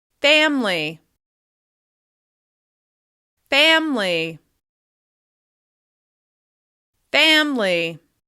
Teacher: Even though there's an I in the middle of that word, a lot of people often drop that sound entirely, including me.